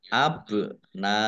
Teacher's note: dibaca panjang Li harakat abna ba sukun bacaan qqolah atau memantul dibaca memantul ditampakkan pantulannya